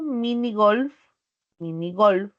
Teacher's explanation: la última sílaba igual es aguda porque la mayor fuerza está en la última